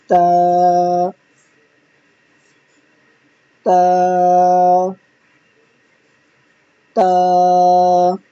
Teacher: नोक और ऊपर के दांतों की जड़ से अदा होता है जबान की जो नोक है उसको ऊपर के दांतों की जड़ पर रखेंगे